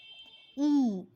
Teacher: observe your lips your lips are unrounded